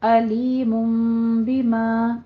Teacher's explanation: عذاب، عذاب علیم بما، علیم میں ایک جگہ تنوین کا قاعدہ اظہار ہلکی ہو رہا ہے، دوسری جگہ تنوین کا ہی قاعدہ ہے انقلاب، یعنی تنوین کے بعد با رہی ہے تو اسے میم کے ساؤنڈ میں چینج کر دیں گے